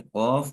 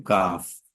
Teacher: زبان کی جڑ اس کو جس کو ہم کہہ سکتے ہیں، اس کا اوپر کا حصہ اگر ہوگا تو اس سے قوف، اور نیچے کا حصہ لگے گا تو کاف